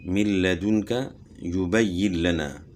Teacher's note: لام کی مثال من لدنک یبین لنا، تو یہاں نون ساکن کے بعد حروف یر ملون میں سے لام آ گیا تو نون ساکن کا لام میں ادغام ہو گیا بلا غنہ، یعنی غنہ کے بغیر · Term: ادغام بلا غنہ